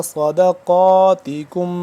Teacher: صاد کو موٹا کر کے پڑھیں گے سین سے جدا ، صاد زبر صاد، دال زبر دا، صدقاتکم، کاف میم پیش